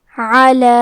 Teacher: کلمت علی میں حرف العین ہے، عین کی ادائیگی حلق کے درمیان والے حصے سے ہے، لام کے بعد کھڑا زبر ہے اور اس پہ مد کا علامہ ہے۔